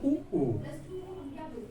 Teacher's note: देख लो, होंठ लोमड़ी की तरह आगे जाएंगे। किससे बोले जाते हैं, होंठ से।